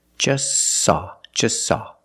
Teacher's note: You link the S with the S. Link them together. · We see the T is between consonants, so don't pronounce it. It's silent. Just saw. You link the S with the S.